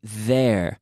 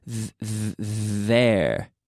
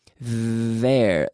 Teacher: TH, que es como la Z en español, pero con las cuerdas vocales moviendo.